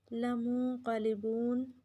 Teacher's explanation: لمنقلبون نون پہ اخفا اور قاف کو پر پڑھیں گے